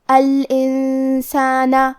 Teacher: سین حروف الاخفاء میں سے ہے اور اخفاء کا معنی ہے چھپا دینا، تو ہم نون ساکن کو چھپاتے ہوئے لیکن غنہ کے ساتھ یہ حکم کو ادا کریں گے